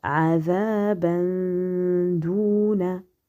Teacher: on a ici ikhfa avec dissimulation léger, avec ghunna léger